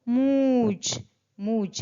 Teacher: जब भी हम चांद बोलते हैं तो हम आधा आवाज यानि आधा मुंह से और आधा नाक से निकालते हैं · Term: अनुनासिक